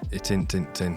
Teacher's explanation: We use what's called a glottal stop.